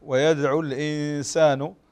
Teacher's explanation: طيب الإخفاء هنا ويدعو الإنسان نون ساكنة وبعدها السين، والسين من حروف الإخفاء